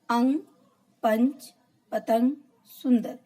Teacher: अंग की ध्वनि अंग को अनुस्वार कहा जाता है। इसका उच्चारण करते समय हवा केवल नाक से निकलती है, जैसे अंग, पंच, पतंग, सुंदर।